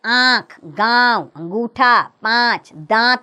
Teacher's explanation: अनुनासिक का उच्चारण नाक और मुंह दोनों से होता है, जैसे आंख, गांव, अंगूठा, पांच, दांत आदि।